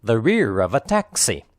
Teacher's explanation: and taxi the other words are unstressed spoken lightly and quickly the three words rear of uh are linked together · the emphasized words are rear and taxi the other words are unstressed spoken lightly and quickly